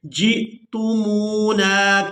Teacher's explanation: جیم کو حمزہ ساکن کے ساتھ ملائیں گے تو جھٹکے کے ساتھ ادا کریں گے